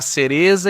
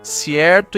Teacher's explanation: Agora vamos analisar a distribuição de um dos fenômenos que mais distinguem o espanhol europeu do espanhol americano, e é a ocorrência do sesel, que é a tendência de pronunciar o Z e o C diante de I e E como um S